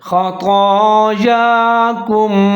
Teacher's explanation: تو اور یا دونوں کے اوپر کھڑا زبر ہے، ان کو ایک الف کے برابر لمبا کر کے پڑھیں گے، جیسے خطایاکم، اور یہاں پر آپ سانس توڑ سکتے ہیں، کیونکہ آگے حرف ایک چھوٹا سا تو آپ کو نظر آ رہا ہوگا، یہ وقفی علامت ہے، تو یہاں پر آپ وقف کر سکتے ہیں، سانس توڑ سکتے ہیں۔